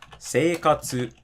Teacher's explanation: the whole word is flat, there is no drop